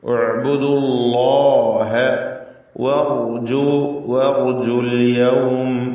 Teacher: അല്ലാഹ് എന്ന ഇസ്മുൽ ജലാലയിലെ ലാമിന് തഫ്ഖീം കൊടുക്കണം, തടിപ്പിച്ച് ആ ലാമിനെ ഉച്ചരിക്കണം. തൊട്ടു മുമ്പിൽ ഉച്ചാരണത്തിൽ ദമ്മ ഉള്ളതുകൊണ്ട് ഉഅ്ബുദുല്ലാഹ വഅർജുൽ യൗം, വഅർജു റാഇന് തഫ്ഖീം കൊടുക്കുക, തടിപ്പിച്ച് റാഇനെ ഉച്ചരിക്കുക.